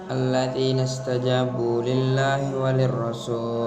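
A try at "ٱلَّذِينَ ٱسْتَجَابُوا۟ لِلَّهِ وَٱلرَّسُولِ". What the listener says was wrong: Mana wali rasul? Enggak ada pakai wali rasul, war rasul aja nyong.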